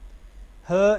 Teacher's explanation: ह ये वॉइसलेस, इसकी वॉइस्ड कोई नहीं है